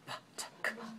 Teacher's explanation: p and t and c so these sounds are voiceless ptk put your hand on your throat feel ptk no voicing